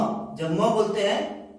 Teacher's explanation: देखिए, नाक को बंद करके हम म बोल रहे हैं, बोल नहीं पाएंगे, अर्थात हम नाक की सहायता से ही म का उच्चारण करते हैं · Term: नासिका